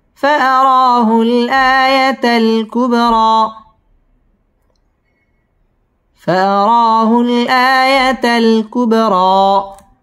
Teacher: ফাআরা মদ্দে তবাই এবং র পুর হবে ফাআরাহুল, আ মদ্দে তবাই একালিফ টান দিয়ে পড়তে হবে।